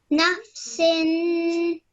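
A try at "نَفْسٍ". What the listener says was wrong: Excellent. Well done. Really good.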